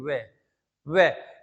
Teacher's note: देखो बोल के वे, यानी कि होठों का भी इस्तेमाल है और इसमें दांतों का भी इस्तेमाल है